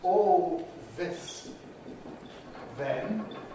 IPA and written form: ˈɔːl ˈðɪs ðen (all this then)